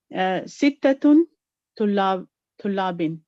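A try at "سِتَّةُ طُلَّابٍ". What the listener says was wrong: So the number itself will not come with a tanween, it will be sittatu tullabin.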